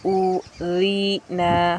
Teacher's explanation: مد اصلی کی مقدار 1 الف یعنی 2 حرکات کے برابر ہے